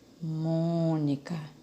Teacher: a sílaba pronunciada com mais intensidade é o mon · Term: sílaba tônica